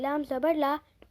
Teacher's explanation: لام زبان کے کنارے کو سائڈ کے داڑوں کو لگائیں گے اور لام کو باریک پڑھیں گے